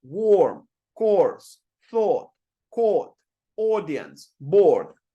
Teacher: look at how my lips are in almost identical position with every single word I'm pronouncing they are kind of in a circle